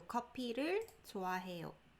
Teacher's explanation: Like the P is very stronger, or there's like a P sound instead of a F sound. So copy.